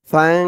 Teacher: ফা দিয়ে নুনকে ধরবে, এখানে ইকফা গুন্না হবে।